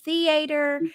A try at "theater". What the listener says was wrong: No, theater, lady. No, not theater. There's no A-ter.